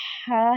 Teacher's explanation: یہ حلق کے درمیان والے حصے سے ادا ہوگا اور اس میں سانس کی آواز آئے گی